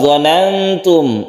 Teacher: Bal dhanantum ini diikhfakan, ikhfa hakiki, nun bertemu dengan ta dan kita dengungkan, kita tahan ketika membaca dhanantum. Allai yang qalibu, allai nun mati bertemu lam, idgham bila guna, ini tidak berdengung, langsung kita tasydidkan ke lam.